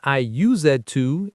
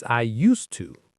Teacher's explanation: It is written use D to, but we say it fast. Used to with the hard S. Right, we don't pronounce the Z sound.